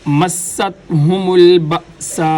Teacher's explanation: الف کے اوپر جو مد ہے، اس مد کو مد لازم کہا جاتا ہے۔ یہ مد 5 الف کی مقدار لمبی کی جاتی ہے، یعنی جتنے وقت کے اندر 5 دفعہ الف الف الف پڑھا جاتا ہے اتنے ہی وقت کے اندر اس مد کو بھی کھینچ کر لمبا کر کے پڑھا جائے گا۔ · مستہم البأساء، حمزہ پہ جھٹکا دیں گے، سین کو واضح کر کے سیٹی کی آواز کے ساتھ پڑھیں گے۔ الف کے اوپر جو مد ہے، اس مد کو مد لازم کہا جاتا ہے۔